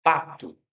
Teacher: Eu escuto o som do P, o som do a, o som do T. E no finzinho eu escuto o som do U, né? Um som do O mais fraquinho.